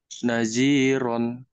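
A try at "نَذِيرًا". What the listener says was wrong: Bukan naji ya, zal. Naziran.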